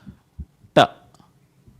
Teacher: roll the tongue backwards, hit it against the roof of the mouth, flick it forwards. It becomes ta.